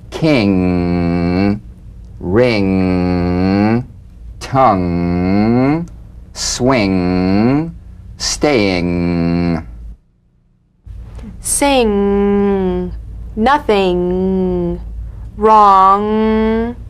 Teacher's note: The NG is a voiced tonguebacked soft pallet nasal consonant. So sing with the back of the tongue in contact with the soft pallet. · So sing with the back of the tongue in contact with the soft pallet. Back of the tongue to the soft pallet vibration coming through the nose. Feel a twangy nasal resonance.